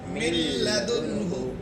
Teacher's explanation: یعنی ادغام تو ہو رہا ہے مگر بغیر غنہ کے ہو رہا ہے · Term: ادغام تام